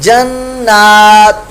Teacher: لہم جنات تجری, یہاں پر جنات نہیں کر دینا, نون کے اوپر ایک تو غنہ ہوگا نون مشدد کا, اور اوپر کھڑا زبر ہے, لہذا اس کو ایک علی دو رکعت کے برابر لمبا بھی کریں گے. جنات, اخفا کا غنہ ہو رہا ہے, تنوین کے بعد تا حرف اخفا